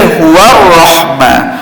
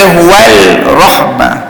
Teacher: alif lam pada ar-rahman itu tidak diguna pakai dalam sebutan